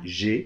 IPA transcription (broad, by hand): leʒe